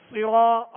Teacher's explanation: صاد کو کیسے پڑھیں گے؟ پر پڑھیں گے، موٹا پڑھیں گے، اس لیے کہ یہ حروف مستعلیہ میں سے. صراط را پر زبر ہے، را پر پڑھا جائے گا، اور یہاں الف مدہ ہے، ایک الف کی مقدار میں کھینچ کر ادا کریں گے.